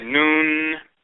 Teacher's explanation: the air has to go through the mouth and the nose if you close your nose and try to say noon then you cut off that sound